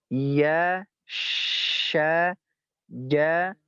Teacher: ya, sya, ja, adanya di lidah bagian tengah